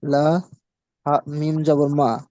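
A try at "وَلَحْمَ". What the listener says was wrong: মিম জবর মা নেই, দেখেন ভালো করে দেখেন। না, মিম কার সাথে জুড়বে? মিম লাম। মিমের সাথে লাম। দেখেন এটা এটা হলো লাম, ঠিক আছে, এই লাম মিমের সাথে জুড়বে, তাহলে মিম লাম জবর। ওয়ালাহ।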